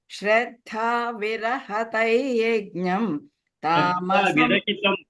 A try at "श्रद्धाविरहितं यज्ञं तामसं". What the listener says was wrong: Shraddha virahitam, not rahitam, virahitam. No, what you said, no, virihitam, you said virahitam, you said virihitam. Virahitam, you told virihitam. Instead of tam, you should say thai only.